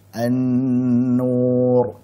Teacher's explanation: kalau nun tasydid berarti kita panjangkan gunanya